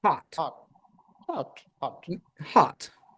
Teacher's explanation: it's not hat from the front, but it's hot from the back. And you can round your lips a little bit or keep it more open, right?